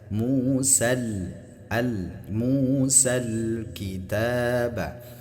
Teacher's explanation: Di sini ada al-nya dinyatakan ya atau dizahirkan. Ah, jadi ketika al alif lamnya dizahirkan, maka di sini berlaku hukum alqamariyah